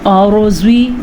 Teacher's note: रॉ को पुर पढ़ना है और ज़्वाद को भी पुर पढ़ना है